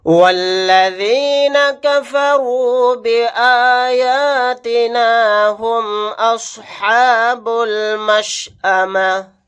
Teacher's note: واو کو ڈائریکٹ لام کے ساتھ ملائیں گے، الف نہیں پڑھا جائے گا